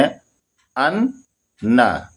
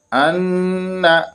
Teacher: اگر تشدید ہوگا نون پہ تو اس میں ناک میں آواز لے کر غنہ اس کا کریں گے ان.